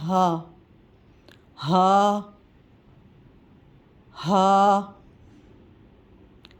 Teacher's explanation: ہا حلق کے آخری حصے سے ادا ہوگا، اس کے ادا کرتے وقت آواز موٹی ہو جائے گی یعنی بھاری ہو جائے گی۔